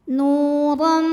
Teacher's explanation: Huruf ra dibunyikan secara tafkhim karena berbaris fathah tanwin, maka dibacanya tebal.